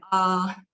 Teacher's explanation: the first tone is a very high tone and high and flat